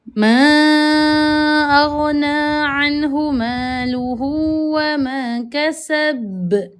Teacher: Yang ketiga juga sama, ada huruf B dekat hujung ayat. Maka bila mana di hujung ayat kita nak waqafkan dia, maka sukunlah ia, maka jadilah qalqalah lantunan.